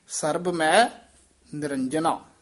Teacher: ਸਰਬ ਮੈ ਨਿਰੰਜਨਾ ਜਿਹੜਾ ਸਰਬ ਮੈ ਪਾਠ ਹੈ ਸਬੰਧਕ ਪਾਠ ਹੈ ਮੈ ਦਾ ਉਚਾਰਨ ਨਾਸਕੀ ਨਹੀਂ ਕਰਨਾ ਮੈਂ ਨਹੀਂ ਕਹਿਣਾ